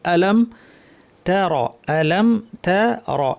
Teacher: যে জিনিসগুলো আমাদের খেয়াল করতে হবে, আলাম তারা, আলাম তারা, এই তারা শব্দটি যদি আমরা খেয়াল করি, তা শব্দটি পাতলা, র ভারী।